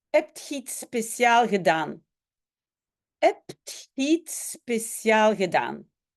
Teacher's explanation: Mais dans le Tussentaal, le S du génitif n'est pas souvent prononcé. Donc, au lieu de dire iets speciaals, on va dire iets spécial.